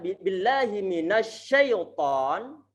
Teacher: makhrajnya huruf shin itu adalah pertengahan lidah antum tempelkan ke atas walaupun nggak sampai nempel. Saat sudah berusaha nempelkan ke atas walaupun tidak nempel, kemudian antum ratakan angin ke seluruh mulut antum.